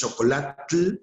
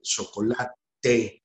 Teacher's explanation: no pueden pronunciar ese fonema palatal africado, y lo vocalizan en TE. Entonces, chocolatl, chocolate, guaxolotl, guajolote.